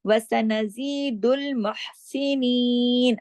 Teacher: صرف زی کو 2 حرکات کھینچنا ہے